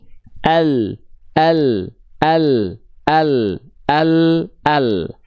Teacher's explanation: cara melafalkan huruf lam itu dari samping lidah depan